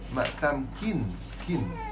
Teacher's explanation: jangan kata mat tamkim, bukan mat tamkim. Bukan tutup mulut